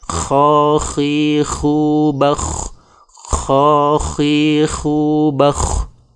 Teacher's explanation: saat membaca huruf kha, terdengar suara serak